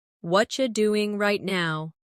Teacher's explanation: In natural speech, what are you becomes what you.